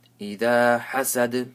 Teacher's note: Pronounce a ha properly, and dal gets a sukun. So you have to make qalqala.